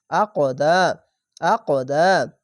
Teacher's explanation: কল কলা হবে এটি মোটা অক্ষর তার জন্য উপর দিকে সাউন্ড যাবে